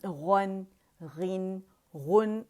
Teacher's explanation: नून बारीक होगा, उसे मोटा नहीं करेंगे